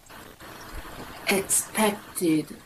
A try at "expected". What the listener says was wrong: So if you think about expect, yeah, England expects, you've got that kt. So then you can't lose that in expected.